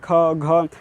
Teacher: जब भी ऐसा हम लोग महाप्राण को यूज़ करेंगे तो हम लोग जो है अंदर से, अपने अंदर से हवा को बाहर निकालेंगे। ख घ, तो हवा बाहर निकल रही है, हवा बाहर निकल रही है, तो ऐसे हम लोग को पता चल जाएगा तो ये महाप्राण है।